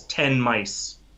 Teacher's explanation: the N and the M sound slide together so well we pronounce that word as if it were one word and the N and M as if it were one sound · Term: assimilation